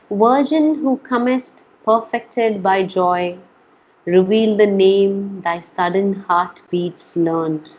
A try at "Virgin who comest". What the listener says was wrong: You have to work on the V's, my dear. Virgin.